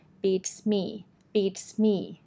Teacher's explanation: Just remember to put the stress on the second word, which is me.